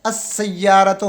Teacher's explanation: الف سین کے ساتھ براہ راست مل رہا ہے السیارتو اور لام سائلنٹ ہے